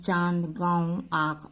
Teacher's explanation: इन स्वरों के उच्चारण में ध्वनि मुख के साथ साथ नासिका से भी निकलती है, अतः अनुनासिक को प्रकट करने के लिए शिरोरेखा के ऊपर चंद्रबिंदु का प्रयोग किया जाता है।